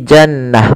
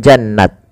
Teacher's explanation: tnya tak marbutah seperti ini atau bundar tak marbut bundar maka ketika dia dimatikan at diwakafkan dia rubah atau dirubah menjadi huruf ha sukun maka menjadi Jannah Bukan jannat tapi Jannah ini sebuah kaidahnya kaidah